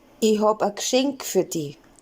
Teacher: the word for present loses its short E vowel in Bavarian, or at least it's really reduced.